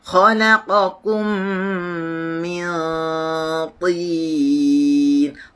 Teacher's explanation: Tin tebal atas dan dia turun. Tin sederhana tebalnya.